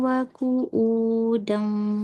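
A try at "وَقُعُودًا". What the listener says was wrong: bukan qu tu ain ain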